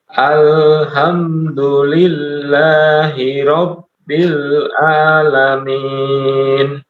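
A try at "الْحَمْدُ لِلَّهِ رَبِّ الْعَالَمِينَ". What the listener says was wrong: Baik, lanjut.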